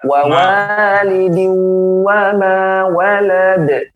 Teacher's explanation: wa dimonyongkan, ketika fathah ma ya dibuka